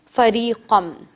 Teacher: فریقن کو میں نے فریقم کر دیا، نون کے ساؤنڈ کو بالکل ختم کر دیا